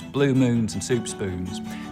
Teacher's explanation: I'll start off with very fronted Goose vowels